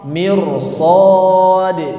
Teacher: Ro dibaca tebal ketika sukun. Sebelumnya kasrah